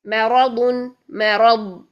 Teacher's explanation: آپ نے را ضاد دونوں کا موٹے کا خیال رکھنا ہے